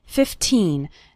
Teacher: remember to pronounce the second syllable of 15 nice and strong